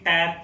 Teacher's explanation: आपकी जो जीवा होगी वो दांत से टच होती है, जब तक टच नहीं होगी आप बोल ही नहीं सकते किसी भी हालत में। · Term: दंत वर्ग